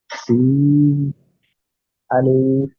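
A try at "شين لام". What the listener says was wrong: জি না, এটা হবে শিন লাম।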